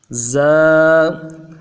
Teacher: حرکتوں کے بغیر، تنوین کے بغیر ادا کر رہے ہیں، ایک الف کی مقدار میں کھینچ رہے ہیں